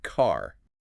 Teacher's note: in a lot of British accents that R is silent